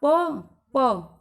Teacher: आपका निचला होठ ऊपर के होठों पर जाकर छूता है और इस तरह से मुख से बाहर निकलने वाली हवा के रास्ते में रुकावट पैदा होती है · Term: प व्यंजन